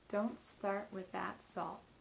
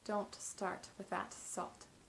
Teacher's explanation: This is because the first version utilizes that held T, creating that stop of air at the T at the end of each word, instead of releasing it into a big puff that you heard in the second version. When you hear that puff, that all the time at the ends of words, it creates kind of a stopping sound, and it doesn't smoothly connect to the next word.